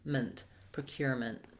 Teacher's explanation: Here we have vowel schwa for letter E. You can almost say it with no vowel at all. Move very quickly from the m to the n, ment, procurement.